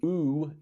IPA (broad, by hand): u: